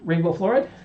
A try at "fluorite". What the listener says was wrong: Fluorite. You always say fluoride.